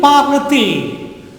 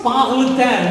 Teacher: for the continuous pronunciation, we make it into parle-t-il